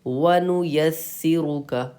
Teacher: را کو پر پڑھیں گے، کیونکہ را پر زبریہ پیش ہو تو را پر ہوگی